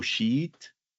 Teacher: if you pronounce it in Spanish, my tip for you is to elongate that e sound. So sheet, because if you say it short, you say something very bad that you don't want to say out loud. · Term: double vowel